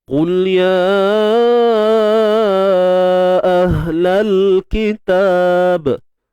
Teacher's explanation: Huruf qaf tebal, baris depan. Qu, muncul bibir. Muncul bukan sebab tebal, tapi sebab ada baris depan. Kemudian lam ni macam biasa jangan diberanakkan, jangan ditawalludkan.